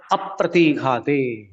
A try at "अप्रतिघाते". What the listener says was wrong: अप्रतिघाते। स्वामी जी, अप्रतिघाते। ई की मात्रा बड़ी है। अप्रतिघाते। अप्रतिघाते।